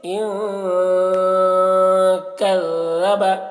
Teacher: نون میں اخفا کریں گے کیونکہ نون ساکن کے بعد حروف اخفا میں سے کاف ہے ، تو اسے اخفا کہتے ہیں، ان کذب، لال کو باریکی